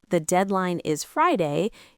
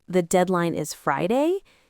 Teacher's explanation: It's when you end a statement with a raising intonation, making it sound like a question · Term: uptalking, up-talking